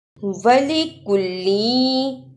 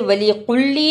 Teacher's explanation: کاف کی جگہ پر قوف کی آواز نہیں آنی چاہیے. کاف کو نرمی سے پڑھتے ہیں.